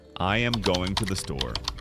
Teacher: Every word is equally stressed. It sounds robotic.